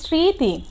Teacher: এখানে দেখো স্মৃতি শব্দটিতে স এর সাথে মফলার রিকার তরস্কাতি, শব্দটিতে কি হয়েছে, স এর সাথে মফলা সংযুক্ত রিকার তরস্কার তি, স্মৃতি, কিন্তু এখানে মফলার উচ্চারণটি কিন্তু কি, মফলার উচ্চারণটি এখানে আসেনি, এখানে শুধু স এর উচ্চারণটা এসেছে